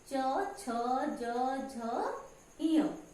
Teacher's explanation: हम तालु की सहायता से बोलते हैं, इसलिए ये तालव्य है। इनको तालव्य कहते हैं, तालव्य वर्ण कहते हैं।